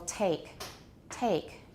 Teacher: at the beginning of a word a voiceless aspirated stop in English is pretty strong